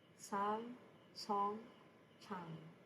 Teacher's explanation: The iyang, which has no sound value as the initial sound, is pronounced as NG as a batchim.